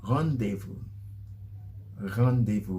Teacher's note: you actually pronounce the r with the back of your tongue